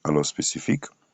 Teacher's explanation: L'accent tombe sur le si